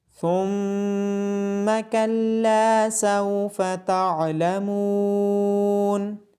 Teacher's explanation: میم مشدد ہونے کی وجہ سے میم پہ غنہ کیا جائے گا۔